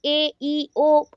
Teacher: भावल्स are the basic speech sounds articulated with an open vocal ट्रैक। ये open है, vocal ट्रैक पूरा open होता है। जब ए बोलते हो ना, पूरा मुंह खुला रहता है एंड पूरा डायरेक्ट आवाज आती है, डायरेक्ट आवाज आती है आपकी वोकल कॉर्ड से।